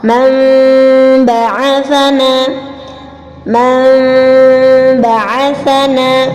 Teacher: cara membacanya adalah menukar huruf nun sukun menjadi huruf mim ketika dia masuk ke dalam huruf ba yang disertai dengan samar, yang disertai dengan suara samar. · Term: iqlab